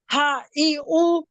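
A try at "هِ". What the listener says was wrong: ई नहीं, ही। ही शी, वही वाला है ये। हा ही हूँ।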